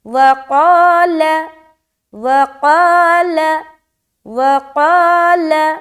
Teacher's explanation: وقال لا نہیں بولنا، وقال، اور یہاں پر قا نہیں بولیں گے، قا گول کرتے ہوئے، الف بھی موٹا ہوگا